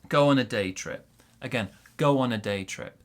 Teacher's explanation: day trip big stress on day